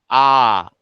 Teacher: আ উচ্চারণের সময় ঠোঁট কিন্তু সম্পূর্ণরূপে খোলা থাকছে, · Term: বিবৃত